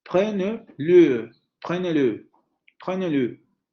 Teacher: con la vocal semicerrada anterior labializada